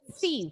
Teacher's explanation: Ujung lidahnya keluar. Seperti pengucapan huruf sa. Sa. Thief.